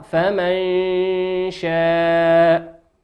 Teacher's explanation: نون ساكنة في كلمة فمن أتى بعدها حرف الشين في كلمة شاء والشين من حروف الإخفاء